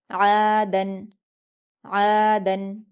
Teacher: आइन पर अलिफ मद्दा है इसे दो हरकात खींच कर पढ़ेंगे और हलक से अदा करेंगे और दाल पर दो ज़बर की तनवीन है।